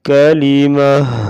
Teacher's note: کاف زبر کا، لام زیر لی کالی، میم زبر ما کالیما، تا پیش تو کالیماتو، وقف کالیمہ۔ آخر میں گول تا ہوگی تو اس سے ہا ساکنہ میں بدل کر وقف کریں گے، کالیماتو کا وقف ہوگا کالیمہ۔